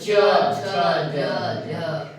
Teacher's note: अंतिम ध्वनि संघर्षी हो जाती है उसे स्पर्श संघर्ष कहते हैं। · तुम्हारा जो जीभ है वो ऊपर की ओर स्पर्श ज्यादा समय ले रहा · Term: स्पर्श संघर्षी व्यंजन